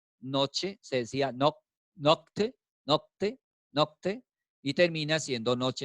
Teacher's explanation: Por eso dice que se palatiza. Se palatiza es que se va hacia el paladar.